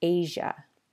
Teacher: Please note, this can also happen inside just one word. Like when the S and the I and the A merge to form a zh sound in the word Asia